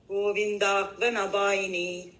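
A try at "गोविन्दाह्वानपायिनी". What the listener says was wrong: சேர்த்து படிக்கிறோம். கோவிந்தாஹ்வான பாயினி நான் பாயினி அப்படின்னு பிரிக்காதீங்க, கோவிந்தாஹ்வான பாயினி அப்படி சேர்த்து படிங்க.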